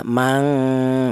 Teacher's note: ada dengungnya dua ketukan